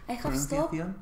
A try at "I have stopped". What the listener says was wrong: La P más o menos lo quitas. I have stopped. It's like, tocas los labios?